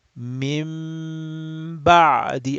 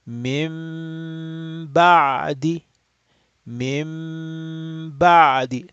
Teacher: you have the Noon Sakin, but it's converted because of Ba into a hidden Mim. So again, you have Mim followed by a Ba.